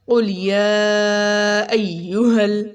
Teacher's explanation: اس میں سب سے پہلے دیکھا قل، اس میں قوف بہت موٹا پڑھیں گے، قوف قوف، قل لام باریک، قوف موٹا، قل یا ایہل، ٹھیک ہے۔ اگر یا کے اوپر مد اور کھڑا زبر دونوں ہیں، اس کو لمبا کریں گے